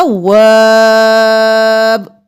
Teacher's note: 5 الف کے برابر وا کو کھینچتے ہوئے با کے ساتھ ملائیں گے